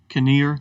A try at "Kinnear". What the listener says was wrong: Isn't it Nur? Nur. Usually the K is normally the K is silent in something like